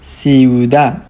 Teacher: We have i u together, so they are going to stay with the same syllables and it is a quick pronunciation.